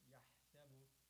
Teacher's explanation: ha from the depth of your throat